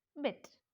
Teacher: It's a front unrounded, lips are unrounded vowel between close and half close. See, between close and half close.